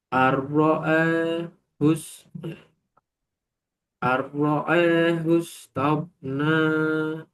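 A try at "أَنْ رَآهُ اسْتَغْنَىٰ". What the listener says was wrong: Ar-ra'ahu istaghna. Jangan dijeda.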